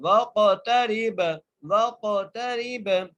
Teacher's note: وق وق تا کے اوپر زبر ہے، را کو با سے ملائیں گے، با پہ نہیں ساکن ہے تو ہم وقف کریں گے اور با پر قلقلہ کریں گے